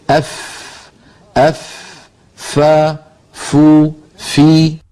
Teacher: اس طرح فا ادا ہوتی ہے کہ اوپر والے سامنے کے دو دانتوں کو نچلے ہونٹ کے تر حصے پر رکھ کر ادا کیا جاتا ہے۔ ہونٹ کے تر حصے کو ہونٹ کا باطن بھی کہتے ہیں۔